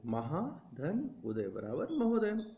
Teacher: दीर्घ आ और ह्रस्व उ के मेल से बन रहा है ओ